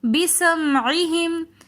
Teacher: بسمعہم میں سین صفیریہ حروفوں میں سے ہیں، سیٹی والے حروفوں میں سے، تو ہم سین کو سیٹی کے ساتھ پڑھیں گے.